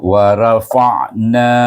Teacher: ra dibaca dengan tebal, tafkim, iaitu wa rafa'na.